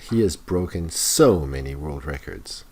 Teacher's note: Notice the stress on so.